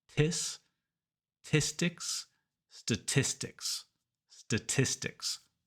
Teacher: the T in the middle makes a T sound, not a D sound. Tis, with a puff of air.